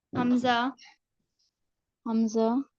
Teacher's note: حمزہ حلق کے آخری سینے کی طرف والے حصے سے ادا ہوتا ہے